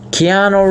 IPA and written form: kiˈɑːnuː (Keanu)